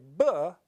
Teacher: When I say p, I just let the air come out, I briefly stop it, and let it explode out of my mouth. Now, when I say b, I'm actually changing, vibrating my vocal cords a bit. And so as I vibrate my vocal cords, that makes a slightly different sound between p and b. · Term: voicing